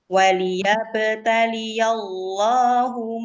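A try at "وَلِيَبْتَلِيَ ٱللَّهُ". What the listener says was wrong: Ya, lafzul jalalah jangan dinabar. Waliyabtaliyallahu yallahu.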